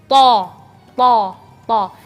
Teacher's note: Jadi to, melafalnya to dan tidak ada angin.